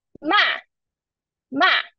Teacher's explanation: for fourth tone, it's ma, ma. It should be longer than the neutral tone